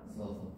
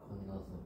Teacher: 자, 요거 같은 경우는 바로 모음에서 일어나는 동음 탈락이 돼요. 같은 모음이 연달아 두 번 발음되면 하나가 탈락되는 현상이라는 거죠.